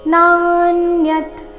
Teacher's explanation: ನ ದೀರ್ಘ ಬಂದು ಸೌಮ್ಯ ಆಘಾತ ಚರಣದ ಕೊನೆಗೆ ಅರ್ಧ ತೆ ಇದೆ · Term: ಸೌಮ್ಯಾಘಾತ